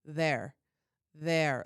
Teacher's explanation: it's a little more breathy, it's a little more airy. We're really chewing on our there. We've really got it back in our jaw. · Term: Utah accent